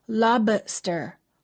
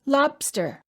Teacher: when you say lobster, make sure that you don't release the B. Don't say lobster. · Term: Hold the B